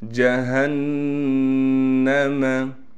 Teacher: جیم کو صاف کر کے نکالیں گے، ہا کو گلے سے نکالیں گے